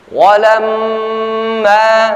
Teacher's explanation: Walamma ja'ahum kitabun min 'indillahi musaddiqun lima ma'ahum wa kanu walamma ja'ahum kitabun min 'indillahi musaddiqun lima ma'ahum wa kanu walamma mim musyaddadah atau mim bertasydid. Kita baca dengan wajib gunnah. Ya, tahan bacaan kita 2-3 harakat atau ketukan.